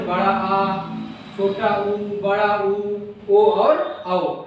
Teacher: जिन स्वरों के उच्चारण में जीभ का पिछला भाग सामान्य स्थिति से ऊपर उठता है उन्हें हम पश्च स्वर कहते हैं।